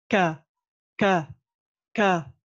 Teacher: Donc, déjà, vous avez trouvé le point de sortie du kaf. Le kaf, il est à l'intersection entre le palais dur donc, et le palais mou.